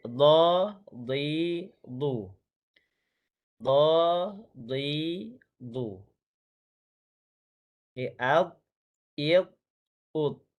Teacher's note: Jadi pastikan sebutan itu ialah di tepi lidah bertemu dengan gigi geraham kanan ataupun kiri. Memanjang, istiltalah. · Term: huruf dhad